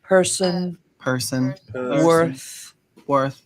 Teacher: what is called our coloring so that makes it rhotic now people in Boston will round the lips a little bit so the vowel will feel more forward